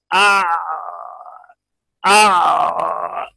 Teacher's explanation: आइन से जो आवाज निकलेगी लेकिन ऐसी निकलेगी कि रुक भी रही है और चल भी रही है, जैसे आ आ, और अगर इसको जारी करेंगे आ वो अलिफ बन जाएगा ये, और अगर बंद करेंगे आ तो हमजा बन जाएगा।